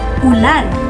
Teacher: bilog at sarado kaysa o